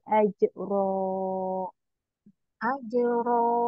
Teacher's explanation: tebalkan ajro ajro ya tapi dua harakat aja ya jangan kepanjangan AJ ini tinggal di apa jangan seperti ditekan-tekan gitu ya [Musik]